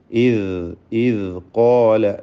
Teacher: അതിൻ്റെ മഖ്റജ് നാവിൻ്റെ അറ്റവും മേലെ മുൻപല്ലിൻ്റെ അറ്റവും എന്നതാണ്. നേരത്തെ സൂചിപ്പിച്ച പോലെ ഇദ് ഖാല ലൂസാക്കി ഉച്ചരിക്കേണ്ട അക്ഷരമാണ്. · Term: ദാല്